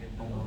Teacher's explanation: lamnya disebutnya lam tebal, lam tafkhim